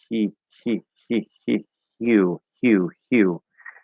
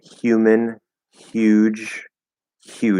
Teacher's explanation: we're going to do a voiceless y and then we're going to without moving the position we're going to start the voice so that we hear the yeah as a voiced sound and